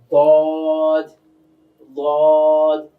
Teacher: কঠিনটা কেন হয়? কারণ জিহ্বার কিনারাটা এটা উপরের মাড়ি দাঁতের সঙ্গে লাগাতে হয়। তো জিহ্বাটা স্বাভাবিক থাকবে, জিহ্বার গোড়াটা গিয়ে মাড়ি দাঁতের সঙ্গে গিয়ে লাগবে।